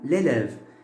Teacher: Parce que dans le mot élève, on a les deux accents, n'est-ce pas? Le premier, c'est accent aigu, donc j'ai mis le E fermé. Et le deuxième, c'est l'accent grave, donc j'ai mis le E ouvert.